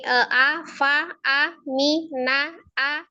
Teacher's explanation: a fa a mi na a itu sama ya satu harakat semua tuh jadi jangan dipanjangin